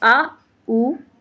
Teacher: और पश्च में कौन कौन से आते हैं, पश्च में आते हैं बड़ा आ, बाकी बच्चे हुए सारे पश्च में आ जाएंगे। पश्च मतलब पीछे से, जहाँ पे हम स्वर का बोलना जो होता है वो पीछे से होता है।